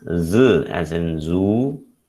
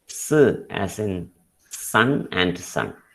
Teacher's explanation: Z is a voiced sound. S is a voiceless sound.